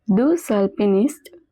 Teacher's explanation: there is a liaison between deux and alpiniste, so the X at the end is also pronounced